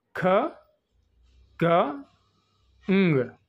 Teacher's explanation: produce చేసినప్పుడు వేలర్లో back of the tongue back of the tongue అనేది touches against the soft ప్ాలెట్